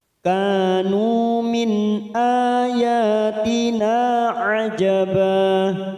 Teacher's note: Kanu masing-masing 2 harakat. Min nun sukun bertemu hamzah idhar halqi kita baca jelas tanpa mendengung. Min ayatina masing-masing 2 harakat fathah berdiri dan na fathah diikuti alif 2 harakat kita panjangkan.